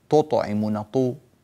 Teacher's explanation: كذلك رقق التاء، من أوسطي ما تطعمون، تو، ولا تقول تطعمون، طو، التاء إذا فخمت تصير قريبة إلى الطاء، فتنبه بارك الله فيك لهذا وجزاك الله خيرا.